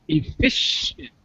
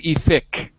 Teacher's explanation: sh sound, not a k, but a sh sound